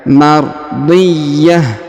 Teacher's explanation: huruf ya berharakat tasdid maka kita tahan dan kita tekan